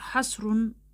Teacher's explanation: Sadəcə h qırtlaq səsidir. Qalın səsdir. Azərbaycan dilində olmayan bir səsdir.